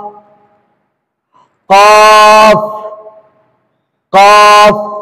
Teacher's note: काफ दरमियानी हलक से निकलेगा